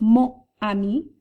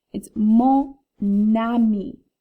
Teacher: what the liaison does we've seen this before where that last consonant that's silent in mo travels over to start the word ami